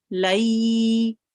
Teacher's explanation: So the ya carries a sukoon sign, and then the letter before, which is the lam here, has a fatha. So we join the lam onto the ya very softly, and then we prolong it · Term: yalin